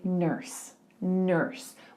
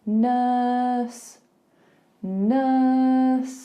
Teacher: can you hear there is no R involved it's just an uh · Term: thinking sound